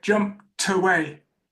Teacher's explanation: Let's say we had the word away, jumped away, robbed away. The t of jumped really comes out by joining. It joins the next word